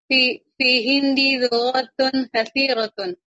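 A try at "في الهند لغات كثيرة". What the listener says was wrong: Ulang lagi Bu, kariri, ulang, masih salah tadi bacanya. Bukan fi hindi, tapi apa? Fil, ada alif lamnya. Fil hindi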